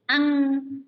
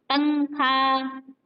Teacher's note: अनुस्वार का उच्चारण करते समय हवा केवल नाक से निकलती है, अनुस्वार का, जैसे कि अंग, नाक से देखिए निकलेगी, पंखा, है इस तरीके से।